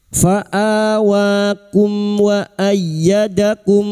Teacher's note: Mim sukun bertemu wau idhar syafawi. Mim sukun dibaca jelas tanpa mendengung.